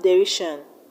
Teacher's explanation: In the word derision, we have the stress on RI.